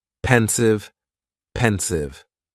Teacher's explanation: Just 2 syllables, and the stress is on that first syllable.